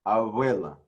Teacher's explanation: In most Hebrew, it actually turned into that V sound. It's very similar to the V, but in actuality, it's just a B with air blowing through it. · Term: bilabial fricative